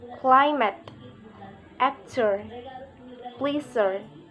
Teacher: primary stress on the first syllable